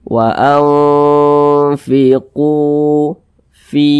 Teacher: Makanya Fi ini dibaca panjang Karena Dia memiliki tanda baca kasrahnya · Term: Mad thbii'i